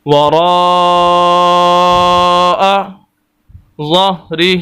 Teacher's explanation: الف کے برابر ہم اس کو لمبا کریں گے۔ وراء ظہرہ، را موٹا اور ضاد بھی موٹا ہے